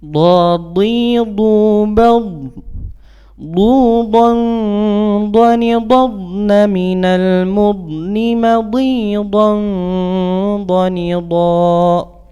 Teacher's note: mengambil tepi lidah kita bagian yang kanan atau boleh yang kiri, tergantung kebiasaan kita. Berarti tergantung kebiasaan kita, dan kita tempelkan kepada gigi geraham kita bagian atas, ya.